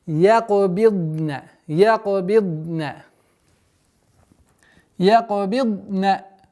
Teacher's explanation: у звука дад существует свойство продолговатости, так называемый иститаля. При остановке на нем с сукуном как бы проглатывается звук.